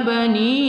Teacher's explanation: ni kita baca mad jaiz munfasil dua alif atau empat harakat